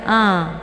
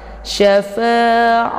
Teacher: Ini ain letaknya di tenggorokan tengah ya, bukan dari hidung.